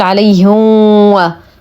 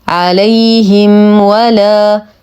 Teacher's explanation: حرف لين نتم كسره الهاء لدينا ميم ساكنه وبعدها حرف الواو الحكم اظهار الشفوي واظهر ما تكون الميم عند الواو